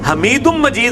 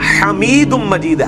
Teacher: ہا ہے حلق سے نکلنے والا